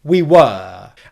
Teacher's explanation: your friends at the party you could say we were and if that were is at the end of the phrase you're going to pronounce it wer with the long pronunciation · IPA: /'wɜː/